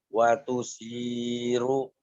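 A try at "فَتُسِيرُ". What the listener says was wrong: Bukan wa itu mah. Fatusiru.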